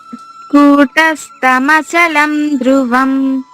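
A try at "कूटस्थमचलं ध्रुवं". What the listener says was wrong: ధ్రువం, అక్కడ ఒత్తుధ ఉంది కదా, తాత దద్ధ అంటాం కదా, ఆ ధ రావాలి. అక్కడ స్థా దగ్గర కూడా నొక్కి రావాలి.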